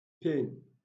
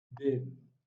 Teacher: The difference is occasioned by the difference in the voice and in the voiceless and the voiced nature of the two sounds.